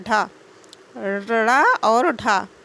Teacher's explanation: इनका उच्चारण करते समय जीभ झटके से ऊपर जाती है।